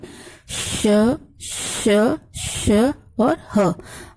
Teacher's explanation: इसके उच्चारण में सांस तेजी से निकलती है, ऊष्मा यानी गर्मी पैदा होती है, इसलिए ये ऊष्म व्यंजन कहलाते हैं।